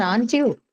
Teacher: if it's a rising tone aren't you then this is going to be a confirmation